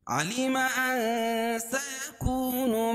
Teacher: نون ساکن کے بعد حروف اخفاء کے 15 حرفوں میں سے سین ہے، تو ناک میں آواز کو چھپا کر پڑھیں گے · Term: اخفاء حقیقی